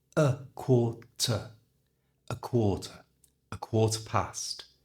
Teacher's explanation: notice the use of two schwas here the a is changed to awar and the e r at